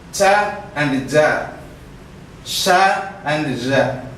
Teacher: When we produce these sounds, our front of the tongue goes very nearer to the post-alveolar, the back of the alveolar.